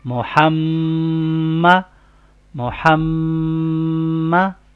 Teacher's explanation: میم مشدد ہے، مطلب میم کے اوپر تشدید سائن آ گیا ہے، تو اس کے اوپر ہم غنہ بھی کریں گے